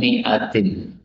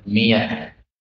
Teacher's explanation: hamzahnya boleh dibaca dengan ya, miyah. Karena hamzah itu termasuk huruf yang berat bagi orang Arab, sehingga supaya mudah dibaca dengan ya. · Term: bacaan ibdal